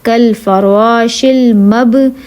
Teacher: اب با ساکن ہے، قلقلہ ہے، اس کو ذرا ہلا کے پڑھنا ہے